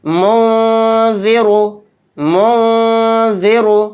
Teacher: نہیں، یہاں پر نون ساکن کے اندر ہمیں اخفا کرنا ہے، یعنی نون کی آواز کو ناک میں چھپانا ہے، ناک کے بانسے میں چھپا کر پڑھنا ہے